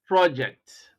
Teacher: at the word project this means you are putting you are placing stress on the first syllable and the meaning you are conveying is that this is a noun